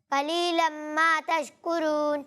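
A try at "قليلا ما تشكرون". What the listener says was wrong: اچھی کوشش کی، لیکن وہی بات ہے کہ قاف کو پر پڑھنا ہے، قاف کو باریک نہیں پڑھنا.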